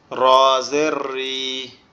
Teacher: জিহ্বার আগার উল্টা পিঠ উপরের তালুর সঙ্গে লাগবে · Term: মাখরাজ